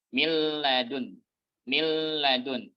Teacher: Guna itu hilang dari nun ketika terjadi idgham kamil.